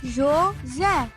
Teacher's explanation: A última sílaba é a mais forte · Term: sílaba tônica